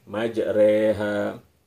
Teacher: Perhatikan ketika tadi baca majrahanya, jadi diimalahkan, jadi miring ke arah bunyi kasrah